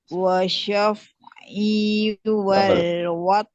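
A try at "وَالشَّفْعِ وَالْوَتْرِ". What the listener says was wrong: Ya, syaf'i pendek. Bukan wasyaf. Ada dua S.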